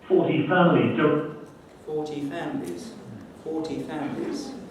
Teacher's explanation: He's producing a short phrase and it's got 2 prominences, one at the beginning, one near the end. The second one, obviously, must be the nucleus, mustn't it?